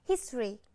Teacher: từ history, trọng âm rơi vào âm tiết đầu tiên là rơi vào âm his, các bạn đọc nhấn. Còn tất cả các âm đằng sau các bạn đọc lướt, các bạn sẽ đọc là history.